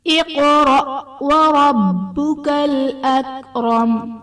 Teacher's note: اقرأ میں قاف حرف مستعلیہ پر پڑھا جائے گا اور حرف قلقلہ ساکن ہے تو یہاں پر قلقلہ خوب ظاہر کریں گے · وربک میں را پر زبر ہے، را کو پر پڑھا جائے گا۔ با حرف قلقلہ مشدد ہے تو یہاں پر قلقلہ خوب جماؤں کے ساتھ ادا کریں گے